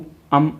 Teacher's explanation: अम में ओंठ झुक रहे हैं तो ये स्वर में नहीं आते